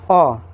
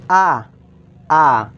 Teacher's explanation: जैसे कि ह्रस्व स्वर उसमें कम समय लगेगा। जैसे कि अ तुरंत ही बोला गया। आ थोड़ा समय ले रहा है।